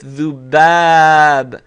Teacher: You hear that long alif